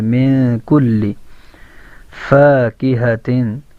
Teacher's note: اس نون کی آواز کو، آدھی آواز کو ناک میں روکیں گے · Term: اخفا